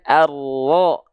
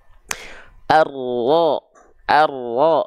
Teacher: dibaca dari a menjadi vokal o bukan karena monyongin mulut tapi karena dia buka mulut tanpa senyum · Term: Huruf tebal